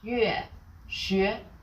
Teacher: make the yu sound, then slide to e